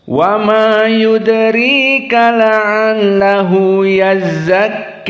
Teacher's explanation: maka di sini yazzak dibaca dengan Al imalah alkubro